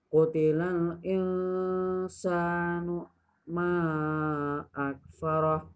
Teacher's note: terdapat hukum bacaan ikhfa karena nun sukun bertemu dengan sin